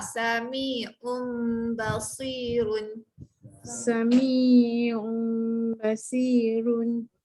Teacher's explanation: kena bunyikan mim tu. Sebabkan mim tu kecil, kita bunyikan dia. Jangan bunyi nun terus. Mim hampir dapat bibir. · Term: iklab